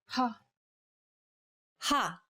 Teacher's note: Saying this sound involves a forceful expulsion of air. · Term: aspirated sounds